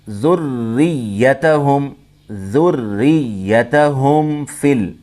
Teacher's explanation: ذُرِّيَّتَهُمْ، ذُرِّيَّتَهُمْ فِل، یہاں میم ساکن کے بعد با اور میم کے علاوہ کوئی بھی حرف ہو تو اگر میم ساکن کے بعد کوئی بھی حرف آتا ہے با اور میم کے علاوہ تو اس وقت اظہار شفوی ہوتا ہے۔ یہاں میم میں غنہ نہیں ہوتا ہے، ناک سے نہیں پڑھیں گے۔ ذُرِّيَّتَهُمْ فِل ایسے نہیں پڑھیں گے۔